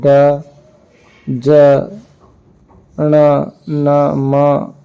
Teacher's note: अनुनासिक जिनका उच्चारण मुख और नासिका से होता है